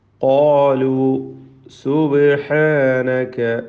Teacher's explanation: ബാഇൻ്റെ സുക്കൂനിനെ ഹറക്കത്ത് പോലെ ശബ്ദം ചലിപ്പിച്ച് വ്യക്തമാക്കണം. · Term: ഖൽഖല